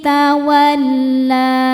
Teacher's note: hukumnya adalah mad thobi'i muqaddar. Sebab huruf lam berharakat fathah panjang. Cara bacanya panjang dua harakat.